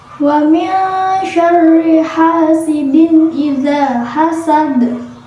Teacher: nun sukun bertemu dengan huruf shin dan dibaca dengan samar-samar sambil berdengung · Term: ikhfa